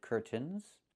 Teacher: I can say curtains or curtains, but don't say curtains. It's curtains with a real T, curtains, or I can use a stop T and say curt, stop the air, put the tongue up, curt, mns, and go directly to the N, curtains.